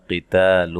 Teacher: قاف کو موٹا، تا کو باریک، الف مدہ ہے، لون یہ نون تنوین کا اخفا ہے، باریک اخفا ہے۔